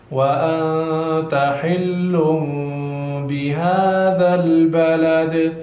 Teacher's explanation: حل تنوین ده بالا ورپسې نو دلته اقلاب وشو، میم وړوکی میم ساکن باید موږ ادا کو